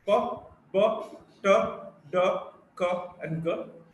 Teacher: Plosives where the sound is built up inside the mouth, and there is a total closure and there is sudden release.